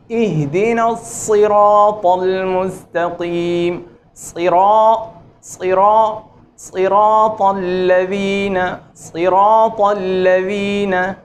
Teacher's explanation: صاد جو ہے وہ سین اور زا کی نسبت پر اور موٹا ہوتا ہے، اور زا اور سین باریک اور ان کی آواز پھیلی ہوئی جی، اور صاد کی آواز پر ہو کر اور موٹی اور تفخیم کے ساتھ ادا ہوتی ہے